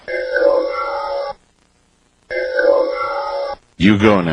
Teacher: It's very whispery and breathy.